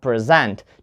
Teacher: So if you say present and the stress is on the first syllable, present, then you have a noun. But if you put the stress on the second syllable, then you have present